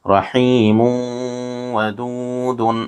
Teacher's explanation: یہاں نون ساکن کے بعد حروف یرملون میں سے دوسرے کلمے میں واو آ رہا ہے، اس لیے یہاں ادغام مع الغنہ ہوگا، اس کو غنہ کے ساتھ ادا کریں گے۔ یہاں تشدید ہے، جس حرف پر تشدید ہے اس کو پچھلے والے حرف سے بھی ملا کر پڑھتے ہیں، ایک مرتبہ اس کو خود ادا کرتے ہیں۔